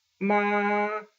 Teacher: That ah sound is exactly what flat and high-pitched first tone sounds like.